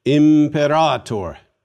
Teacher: Note the long A in the second to last syllable. That is why the accent is on the penult and not on the antepenult or third to the last syllable.